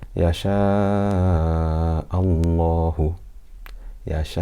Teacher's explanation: The lam is full. It doesn't have a kasra before it.